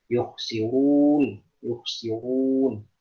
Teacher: tebalkan huruf ro pada lafaz yukhsirun ya